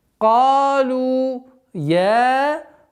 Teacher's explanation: Вот это долгота в размере двух огласовок естественной долготы фатха над буквой я.